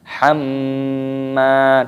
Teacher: Dan dipanjangkan mimnya karena ada tanda alifnya matobi'i, dipanjangkan dua ketukan. Hamma didengungkan dulu baru dipanjangkan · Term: gunnah